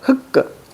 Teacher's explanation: 리을 기억은 뭘로 발음한다? 뒤에 걸로 발음한다.